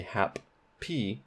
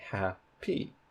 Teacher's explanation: in happy where we have two p's written there's only one p sound so you don't say hap p you say ha p you